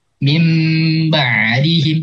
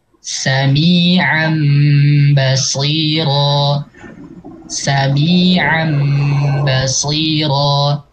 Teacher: Jadi kalau nun ketemu ba secara bunyi itu nggak bisa, dia butuh bantuan atau perantara si mim. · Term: iklab